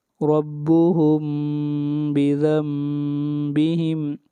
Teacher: یہاں پر نون کے بجائے میم کو پڑھا جائے گا، یہی اقلاب ہے